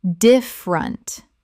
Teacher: Native speakers reduce this to 2 syllables in normal conversation.